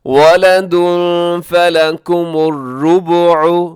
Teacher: تنوین کے بعد فا ہے تو یہاں کریں گے اخفا، یعنی آواز کو ناک میں چھپائیں گے۔ کیسے؟ وَلَدٌ فَلَكُمُ الرُّبُعُ، رُبُعُ، اسے ربعو نہیں پڑھنا آپ نے کیونکہ با کے اوپر بھی پیش ہے، تو اسے با کی پیش کا بھی اپنے خیال کرنا ہے۔